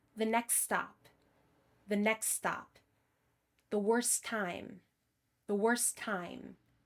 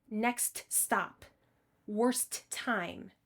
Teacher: When a word ends with the sequence ST, drop the T if the next word begins with a consonant.